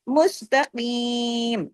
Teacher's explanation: صراط کل، آگے دیکھیں باریک حروف ہے، کل، اس کو کل نہیں، کل۔ مستقیم، قاف کو ہیوی کرنا ہے، 2 حرکات کھینچنا ہے